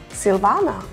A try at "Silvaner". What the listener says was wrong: Silvaner. You actually don't really pronounce the R.